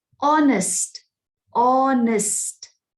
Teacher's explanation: So you can hear the sound aw, honest. So aw is a vowel sound.